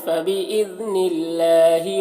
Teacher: فبإذن اللہ ذال کو باریک پڑھنا ہے اور اللہ کے لام کو بھی باریک پڑھنا ہے کیونکہ اس سے پہلے زیر ہے